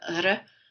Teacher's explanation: And it's a completely different R. And here in Manitoba, you'll hear that apical R a lot more than you would in Quebec.